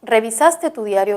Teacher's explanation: la respuesta puede ser sí o puede ser no entonces esta pregunta tiene tono ascendente